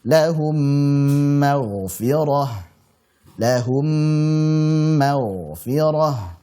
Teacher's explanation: kita memanjangkan gunnah saat mengucapkan huruf mim tersebut. Karena mim ketemu mim sama saja dengan mim tasydid. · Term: idgham mimi